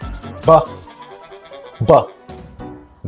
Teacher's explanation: if you try to feel your throat while you're pronouncing the B sound, you can feel your vocal cords vibrating